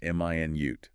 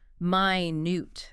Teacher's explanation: Stress on the first syllable. M i nute. That's the unit of time 60 seconds.